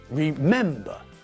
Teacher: remember has got three syllables but again the stress is not at the end of the word but in the middle